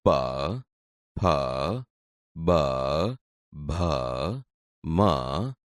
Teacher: તે બોલતી વખતે હોઠ એકબીજાને અડે છે તેથી આ ઓષ્ઠ્ય વ્યંજન છે